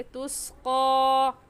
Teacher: क्योंकि तुस्का के ऊपर खड़ी ज़बर है और खड़ी ज़बर को एक अलिफ की मिक़दार खींच कर पढ़ते हैं